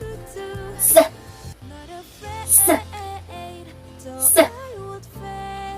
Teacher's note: It doesn't feel vibration, right? So it's called voiceless sound.